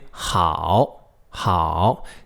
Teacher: see how it rises at the end. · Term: third tone